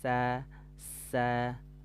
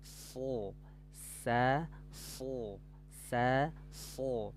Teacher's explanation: kalau sin itu tipis ya, sa sa, tapi kalau shad diangkat pangkal lidahnya, so sa so sa so.